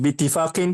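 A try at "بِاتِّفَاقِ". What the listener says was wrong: enggak. Mudhaf nggak boleh ada tanwin. Rasulullahi bittifakin nuhati. Kayak bunyi tanwin, padahal bukan. Karena alif lam syamsiah.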